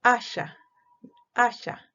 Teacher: momentáneamente va a haber un cierre del aire para que salga el aire y después va a haber una liberación, pero con un poco de fricción. Este es el caso de las llamadas africadas.